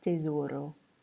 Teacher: T is also not aspirated, so try not to have too many puffs of air coming out when you say tesoro.